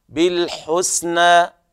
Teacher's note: الوقوف على المد الطبيعي بمقدار حركتين